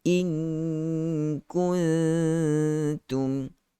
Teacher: Gunnah bagi cukup Ada nun mati bertemu dengan kaf, nun mati bertemu dengan ta, kedua-duanya adalah hukum ikhfa. So sembunyikan bunyi nun, masuk ke dalam huruf kaf.